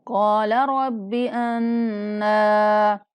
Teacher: کاف کو پر کر کے ایک الف کے برابر لمبا کر کے پڑھیں گے، را کو بھی پر پڑھیں گے۔ قال رب انا، نون پر غنہ کرتے ہوئے ایک الف کے برابر لمبا کرنا ہے۔